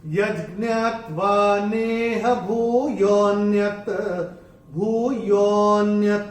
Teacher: अभी इसमें जो तीसरे चरण में अगर आप देखेंगे, ये जो अवग्रह आ रहा है, उस अवग्रह को, जिसमें जो विलुप्त अ है वो सुनाई देना चाहिए, तो यो को थोड़ा सा हम खींच के बोलेंगे